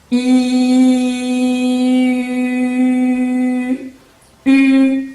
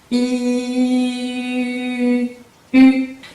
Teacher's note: Van a pronunciar una I sonriendo, miren mis labios, y poco a poco vamos a ir a cerrar los labios así. Y al final vamos a llegar a pronunciar la U, ya que dentro del paladar es lo mismo que si estuvieran pronunciando una I. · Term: el U francés